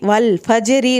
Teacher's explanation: را پتلا پڑا جائے گا کیونکہ را کے نیچے زیر آ گیا ہے